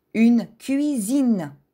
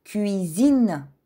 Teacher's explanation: Друго правило на френски за произношение е свързано с съгласната S. Когато S се намира между две гласни, изговаряме Z.